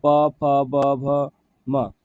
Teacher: प फ ब भ म बोलने पर क्या होता है? हमारा दोनों ओठ जो है वो आपस में सटती है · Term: प वर्ग